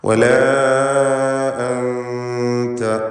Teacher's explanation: ഇതിലുള്ള അലിഫിൻ്റെ ദീർഘം മദ് മുൻഫസിൽ ജായിസ് എന്നതാണ്. 4-5 ഹറക്കത്തിൻ്റെ അളവിൽ അലിഫിനെ ദീർഘിപ്പിക്കുക. · 4-5 ഹറക്കത്തിൻ്റെ അളവിൽ അലിഫിനെ ദീർഘിപ്പിക്കുക. അൻത ഈ പദത്തിൽ സാക്കിനത്തായ നൂനിനെ ഇഖ്ഫാ ഹഖീഖി നൽകി മറച്ചു മണിക്കണം, അവ്യക്തമാക്കി മണിച്ചുച്ചരിക്കണം.